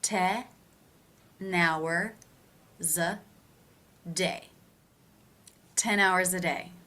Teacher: The next case, is going to be the schwa sound, and we're actually going to take the z sound from the word before. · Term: linking sound